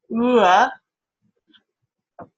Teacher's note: All right, so if you have a sound like ooh, maybe you add on some extra, you hold on to that ooh, and you move towards more of a schwa position